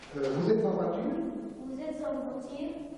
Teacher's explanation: il s'agit de l'erreur classique des Tunisiens qui confondent le U avec le I. Diagnostic en erreur, hein, excès d'éclaircissement.